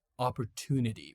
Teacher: In American English, you can pronounce it like opportunity with a to sound, not a chew sound. Okay, a to sound is much better.